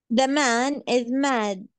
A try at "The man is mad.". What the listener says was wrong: Very good. Perfect.